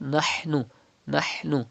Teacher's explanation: Pronounce ha from the middle part of your throat.